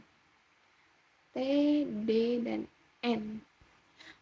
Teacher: konsonan yang dihasilkan dengan ujung lidah yang bertindak sebagai artikulator dan daerah antar gigi sebagai titik artikulasi. Jadi, ee lidahnya ikut bermain gitu. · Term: konsonan apikodental